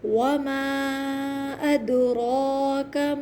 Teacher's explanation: دال پہ قلقلہ ہوگا، آواز پلٹ کر آئے گی